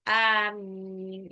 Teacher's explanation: Ini amin beda ya, makanya nih kalau kita yang benar itu kalau pas doa itu bukan amin, bukan mimnya yang panjang, tapi dua-duanya panjang. Amin, yang benar gitu.